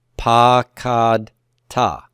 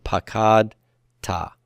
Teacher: The accent's on root 2. It's on the kof, right?